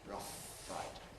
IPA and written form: ˈrʌf ˈfaɪt (rough fight)